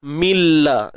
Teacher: dari sudut membunyikan dia, memang kita dapati bunyi lam, bunyi nun tu dah tak ada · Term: idgham bila gunnah